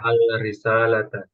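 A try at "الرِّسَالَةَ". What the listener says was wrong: Ar, kan samsia, samsia. Ar risa, ar risalata.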